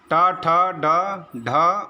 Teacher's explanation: ट ठ ड ढ और मूर्धन्य सकार, इसका उच्चारण स्थान क्या है, मूर्धा है